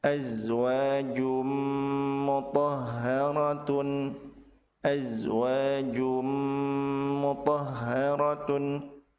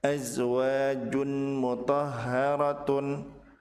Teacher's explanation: huruf mim dan ditahan 2 harokat disertai dengan gunnah.